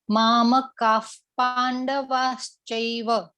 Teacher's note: કાની પાછળ જે વિસર્ગ આપેલા છે ને 2 ડોટ, એનો ઉચ્ચાર આપણે અહીંયા ફ કરવાનો છે.